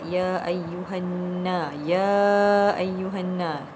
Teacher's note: hendaklah dibaca panjang pada permulaan ayat ya ayyuhanna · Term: mad jaiz munfasil